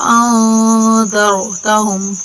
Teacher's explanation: را یہاں موٹا کر کے پڑھیں گے را کو